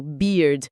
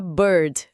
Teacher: o beard de barba pede uma boca esticada, um sorriso beard. Se você arredonda o lábio e joga o som pra garganta, vira bird.